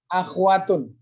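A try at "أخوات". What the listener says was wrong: Akhwatun, bukan akhwatun. Ho-nya itu ada harokat, mutaharrik, akhwa, fathah. Bukan, laisa akhwatun. Lakin akhwatun, akhwatun. Jadi ho-nya itu ada harokatnya, fathah, bukan sukun.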